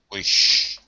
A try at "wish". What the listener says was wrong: Yes, just watch your short eye. Wish. You're still doing a lot of that E sound instead of the I. So that's something that you can keep working on, trying to get it just the short I, wish.